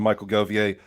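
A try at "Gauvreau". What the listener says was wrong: Don't pronounce that. Don't pronounce that G.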